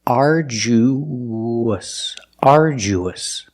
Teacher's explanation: arju arduous arduous the last syllable is relaxed us us and when you link the ooh to the US there's a sound that links the vowels it's like a w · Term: the w sound